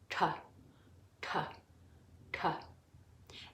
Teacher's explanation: The T is pronounced with the tongue at the back of the palate